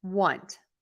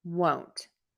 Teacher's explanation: think of it as being spelled with a U Want whereas won't think about it with a longer o